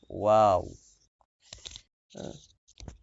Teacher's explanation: দুই ঠোঁট গোল করে সামান্য খোলা রেখে উচ্চারিত হয় ওয়াও। দুই ঠোঁট গোল করে, ঠোঁট গোল হয়ে যাবে একদম।